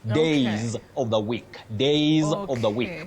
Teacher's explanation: it's different from the plural of day the plural of day that plural s takes what we call the voice sound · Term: voiced sound Z